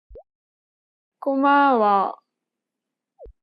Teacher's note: she kept the same pitch for the first and second syllable but lowered the tone for the last syllable